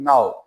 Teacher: ना के बाद आ, ओ, दो आवाजें डिफ्थोंग साउंड आ रही है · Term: ow sound